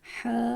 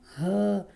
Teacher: ح گلے کے درمیان سے زیادہ ہوتا ہے، ہ گلے کے نیچے والے حصے سے بہت سے لوگ ان کو مکس کر دیتے ہیں، تو اس کا خیال رکھنا ہے۔